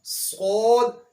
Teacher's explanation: اس کے بعد صاد، یہ حرف ہم نے حروف صفیریہ میں بھی پڑھا تھا اور حروف مستعلیہ میں بھی پڑھا تھا، یعنی اس حرف کے اندر سیٹی کی آواز بھی پائی جاتی ہے اور اس حرف کو موٹا بھی پڑھا جائے گا